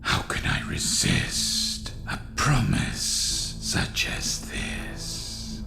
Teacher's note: He even places heavy emphasis on resist, treating the idea of him ignoring this promise as incredulous.